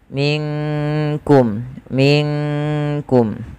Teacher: kaf makhrajnya dari pangkal lidah kita beririsan dengan langit-langit yang ada di atas · Maka dengan ikhfa abad, maka minkum ya. Maka di situ nunnya disamarkan langsung kepada huruf kaf